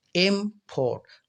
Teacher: जैसे एक वर्ड है IMPORT, इम्पोर्ट, तो याद रखें आप अगर एम पर जोर लगाते हैं, इम्पोर्ट, तो पोर्ट को जो है आराम से प्रोनाउंस करते हैं, ज़्यादा जोर नहीं लगाते, तो इम्पोर्ट, तो एम पर ज़्यादा जोर लगाया तो इसी को कहते हैं स्ट्रेस